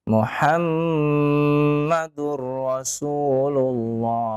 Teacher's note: 6 harokat karena dia disamakan dengan arid lis sukun